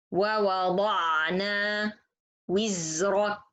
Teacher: So letter za is Rekhwaa and majhur letter. So this letter is a little bit longer.